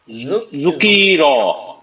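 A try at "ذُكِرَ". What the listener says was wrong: লম্বা নাই, যুকিরা,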